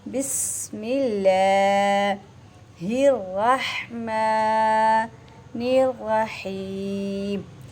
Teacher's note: अल्लाह की लाम को बारीक करना है, और इसके बाद हा है आपके हलक से अदा होगा।